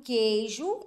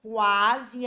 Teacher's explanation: quando eu tenho o dígrafo né no q u o som do U tem que sumir